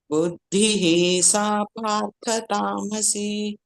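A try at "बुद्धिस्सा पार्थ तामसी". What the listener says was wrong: ಅಲ್ಲಿ ಬುದ್ಧಿ ಹೀಗೆ ಹೇಳ್ಬೇಡಿ, ಬುದ್ಧಿಸ್ಸಾ ಪಾರ್ಥ ತಾಮಸ್, ಪ್ರಶ್ವಾಸ ಬಿಡಿ ಅಲ್ಲಿ. ಬುದ್ಧಿಸ್ಸಾ ಪಾರ್ಥ ತಾಮಸಿ.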